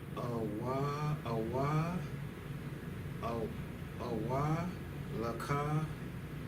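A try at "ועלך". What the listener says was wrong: No, wa'a. You say awa. Wa'alaka.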